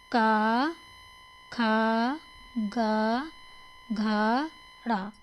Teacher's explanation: जो वर्ण कंठ अर्थात गले के द्वारा बोले जाते हैं जिनकी आवाज कंठ या गले से निकलती है उन्हें कंट विरंजन कहते हैं नेक्स्ट क्वेश्चन देखते हैं 24 नंबर